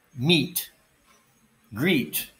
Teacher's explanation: neither one of these are diphthongs they're just one vowel sound and this sound of e as in meat is the same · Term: long e sound